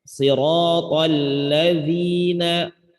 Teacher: Ada lam bertasydid. Ya, jadi tahan ada namanya tasydid ini. Lamnya ada dua ya.